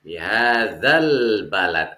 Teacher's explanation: Alif lamnya terdengar jelas. Itu alif lam qamariyah.